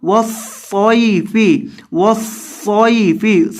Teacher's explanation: یہاں یا کی وجہ سے صاد کو آپ نے لمبا کر کے نہیں پڑھنا، کیونکہ یہ یا حروف مدہ والا نہیں ہے۔ · صاد کو موٹا کر کے پڑھیں گے اور اس کے اندر سیٹی کی آواز پیدا کریں گے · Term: حروف لین